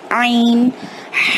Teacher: عین، ہا، اس طریقے سے تھوڑا براڈ ہو جاتا ہے اور حلق سے ادا ہوتا ہے یہ عین